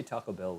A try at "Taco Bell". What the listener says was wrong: Taco Bell. Why are you putting so much emphasis on the bell? Taco Bell. Because it's taco. Taco Bell. Taco Bell.